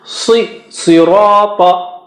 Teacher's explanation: Si is thick, very thick and high, but because of kasra its effect is decreased. Sirata, Ra is thick.